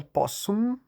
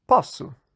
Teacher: Antes as pregas vocais não vibravam, depois elas passaram a vibrar. E o S longo virou só um S curto.